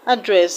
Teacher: Address, the first syllable is a schwa sound, so you do not stress a schwa sound. So the stress is not on the first syllable in option D.